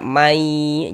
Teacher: Jadi nun sukunnya masuk, melebur ke huruf ya. Sehingga kita baca mai, jangan dibaca man, jangan. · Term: idgham bi gunnah